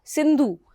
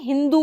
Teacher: वैदिक संस्कृत में स के स्थान पर अवस्था में ह आदेश हो जाता है।